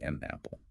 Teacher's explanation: But if I use linking, I take the N from an and push it onto the A of apple.